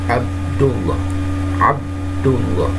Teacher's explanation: Qalqalah sugro itu kecil ya, memantul kecil lah dikit ya, di tengah posisinya. Huruf qalqalah itu ada di tengah.